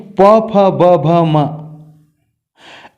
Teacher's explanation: उच्चारण स्थल ओष्ठ से स्वर उ उच्चारित होते हैं और वर्गीय व्यंजनों का प वर्ग यानी प फ ब भ म, इनका जब उच्चारण करते हैं तो परस्पर होठ स्पर्श करते हैं, इसलिए इन्हें ओष्ठ्य वर्ण कहते हैं